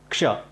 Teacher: क आधा बोलना है, फिर उसके बाद श बोलना है, दोनों को मिलाकर बोलना है, तब बनेगा क्ष। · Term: संयुक्ताक्षर